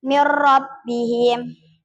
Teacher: idgham bila gunnah itu memasuki tanpa berdengung